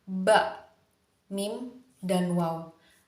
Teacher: konsonan bilabial ini hasil dari mempertemukan bibir bawah dan bibir atas di mana bibir atas ini lebih pasif dibandingkan bibir bawah bibir